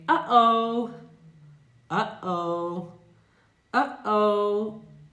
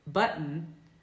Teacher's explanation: This one is different, and it can be a little bit more difficult because unlike the true T, t, t, t, and the flap T, as in words like unity, the glottal T is not created in the mouth, but here in the throat. So we create this glottal T, this kind of invisible T sound, by closing the airway in the throat very quickly